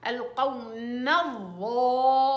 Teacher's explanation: بس الظا والألف فخميها